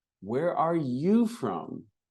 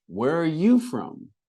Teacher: And we have an emphasis on you.